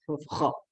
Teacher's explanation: huruf kho itu juga tempatnya di tenggorokan bagian atas